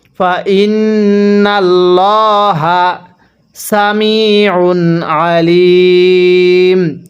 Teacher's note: আল্লাহ শব্দটা মোটা করে পড়ব, কারণ আল্লাহ শব্দের পূর্বে জবর আছে